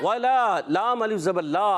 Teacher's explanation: الف مدہ ایک الف کھینچ کر ادا کریں گے